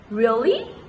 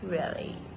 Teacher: Rising tone can indicate surprise like really, and falling tone can indicate boredom like really.